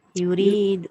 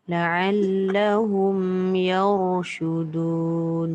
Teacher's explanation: Kalau berhenti tu kena nyatakan ra dan ra tu tebal.